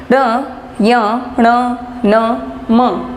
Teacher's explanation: सभी में ध्वनि जो है मुख के साथ साथ नाक से भी बाहर आ रही है, इसलिए ये अनुनासिक कहलाते हैं।